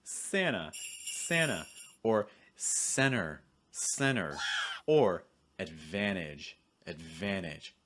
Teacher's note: when a T comes after an N sound, that T is going to disappear completely. So instead of saying anta, it becomes Anna.